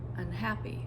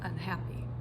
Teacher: all I did was add an unstressed syllable to the beginning of the word unhappy. So it's It's almost like uh it's almost like I didn't even say it.